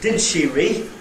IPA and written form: ˈdɪd ʃi rɪ (did she re)